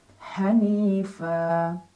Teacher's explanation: fathah tanwin digantikan fathah dan kita baca panjang dua harakat